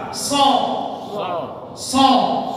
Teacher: So tidak monyong, bukan so. Bukan kayak kita so.